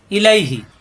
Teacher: ইলাইহি লিনের হরফ কোনো টান নেই